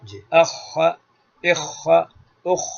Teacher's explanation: تو خاء میں حلق تھوڑا رگڑائے گا تھوڑا سا